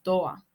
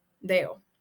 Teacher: la D intervocálica, tiene que ver con la eliminación o desaparición de esa D. Sobre todo se utiliza con frecuencia en palabras terminadas con ado, ada, ade, eda, ido y demás.